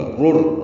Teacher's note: را پر پڑھیں گے، را کو را سے ملا دیں گے، ادغام کریں گے، ادغام کامل ہے، یہاں پہ غنہ نہیں ہوگا. رر، را کو را سے ملا دینا ہے.